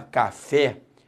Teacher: quando você fala café, a sílaba tônica é o fé.